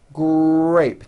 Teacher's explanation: the R sound is stronger and you even hear it more than the G sound. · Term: R blends